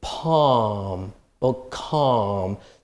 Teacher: So be careful because the L is not pronounced